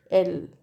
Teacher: Airflow passes through the sides of the tongue, L, right, which makes contact with the roof of the mouth, right. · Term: lateral